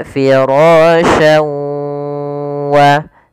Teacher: cara membacanya adalah memasukkan huruf tanwin pada lafal syan ke huruf waw, kemudian digunnahkan, ditahan. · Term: idgham bi gunnah